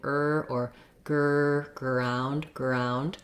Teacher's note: you may also find that the g helps you make that back american r